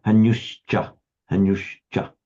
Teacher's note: if the next word begins with a cha, then it becomes a sh